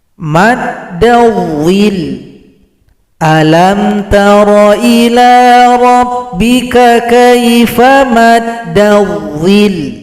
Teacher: Kalau kita berhenti di sini, huruf lam yang tasydid disukunkan, huruf yang berada sebelumnya tekan ke huruf lam. Disebut juga dengan bacaan nabaur, ditekan nada suara kita. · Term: nabar